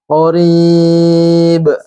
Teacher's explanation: Qarib dipantulkan, mad alat li sukun dan qalqalah.